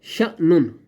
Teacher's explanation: اب شین کو ہم نے جھٹکا دے کر پڑھا